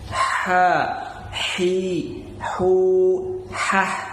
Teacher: Kemudian ha dia perbedaannya lebih tipis. Ha dia mengeluarkan udara dulu. Ha seperti berbisik ya.